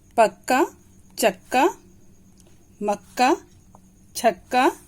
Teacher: जो बीच में आधा वर्ण है ये, इसकी ध्वनि बहुत ही कम निकलती है।